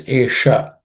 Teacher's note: the sha is again aspirated sha.